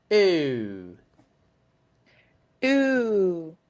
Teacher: make sure your tongue does not move at all. It's just a monophthong. There's no change in the sound.